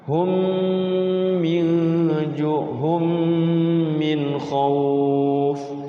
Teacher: Nah ini khusus mim sukun ketemu mim, ini sebenarnya masuk ke sini. Cuman karena mim itu adalah huruf huruf bibir ya, huruf 2 bibir, maka dia didengungkan ya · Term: idgham mimi